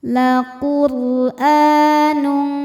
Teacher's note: La Quranun A hukumnya mad badal sebab ada hamzah yang dipanjangkan. Cara bacanya panjang dua harakat.